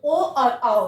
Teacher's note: कंठ और ओष्ठ से मिलकर, यानी कि कंठों से होठों से जो उच्चारित होगा, वो होगा कंठोष्ठ वर्ड, जिसमें ओ और औ आएगा, इसमें ओ और औ आएगा।